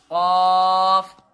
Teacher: یہ ادا ہوتا ہے زبان کی جڑ اور تالو کے نرم حصے سے. یعنی کہ زبان کی جڑ سے اور تالو کے نرم حصے سے یہ ادا ہوتے ہیں.